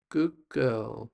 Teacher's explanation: So the D changes the sound to become more like a G sound. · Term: Sounds that change